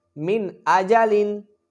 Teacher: نون ساکن کے بعد حمزہ آ گیا ہے تو لہٰذا ہم یہاں اظہار کریں گے، غنہ نہیں کریں گے